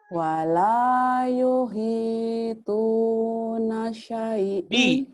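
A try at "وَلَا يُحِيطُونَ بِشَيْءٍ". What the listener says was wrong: Bi-nya ketinggalan. Bisya'in. Wala yuhituna bisyai'in.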